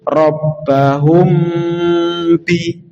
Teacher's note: kalau mim dan ba ini membacanya dengung, artinya dua harokat ditahan dulu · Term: ikhfa syafawi